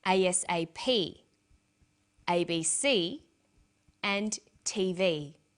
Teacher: each letter in the abbreviation is pronounced separately but the last letter is pronounced more strongly because it carries the primary stress so we say us a ASAP ABC and TV listen for